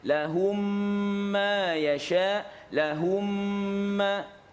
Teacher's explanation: So dibaca menjadi satu mim yang bersabdu · dibacakan dengan kadar dengung dua harakat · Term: dua mim digabungkan